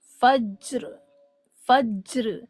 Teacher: اس جیم کو ہم ایکو bouncing sound یا ساؤنڈ آف جرک یا ڈبل سنائی دینے والی آواز کے ساتھ پڑھتے ہیں